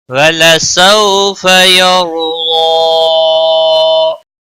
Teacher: را ساکن سے پہلے زبر ہے، اس لیے را کو موٹا پڑھیں گے